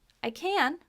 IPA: ˈkæn